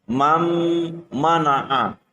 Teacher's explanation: dengan huruf mim dan nun sukun bertemu dengan huruf mim maka huruf nun harus dimasukkan ke dalam huruf mim · Apabila ada nun sukun bertemu dengan huruf mim, maka huruf nun harus dimasukkan ke dalam huruf mim dengan cara mendengung. Contohnya adalah tulisan tertulis adalah man, mana'a, akan tetapi membacanya adalah mam, mana'a. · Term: idgham bi ghunnah